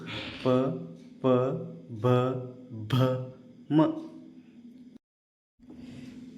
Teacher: ತುಟಿಗಳಲ್ಲಿ ಹುಟ್ಟುವ ಅಕ್ಷರಗಳಿಗೆ ಓಷ್ಟ್ಯಾಕ್ಷರ ಅಂತ ಕರಿತೀವಿ.